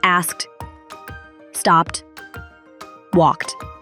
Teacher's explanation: when your root word or the word that you start with ends in a voiceless consonant sound then that Ed ending is going to sound like a t